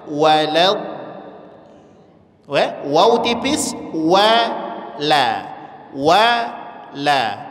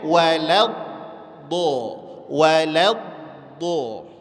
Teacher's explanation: Wawnya tipis, lamnya tipis, do-nya tebal. Maka dibaca walad, walad. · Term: do tebal